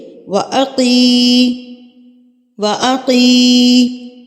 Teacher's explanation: कफ को आप पुर करके पढ़ेंगे यानी कि मोटा करके